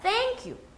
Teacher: you보다 thank가 더 소리가 크고 더 높고 강조가 돼요. 왜? thank가 더 중요한 메시지를 담고 있기 때문이에요.